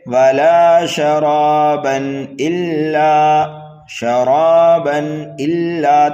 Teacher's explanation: تنوین کے بعد میں حمزہ آ رہا ہے اس لیے یہاں پر اظہار حلقی ہوگا، گنہ نہیں کریں گے